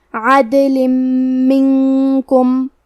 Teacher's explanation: میم حروف الادغام بغنہ میں سے ہے تو ہم یہ حکم کو غنہ اور تشدید کے ساتھ ادا کریں گے. عدل منکم.